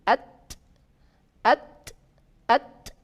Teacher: Karena nafas yang keluar sedikit, dia berdesis saja.